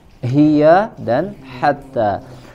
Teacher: Salamun hiya hatta, sempurnakan di sini antara huruf ha dengan ha ya, dari aqsal halq dan wasatul halq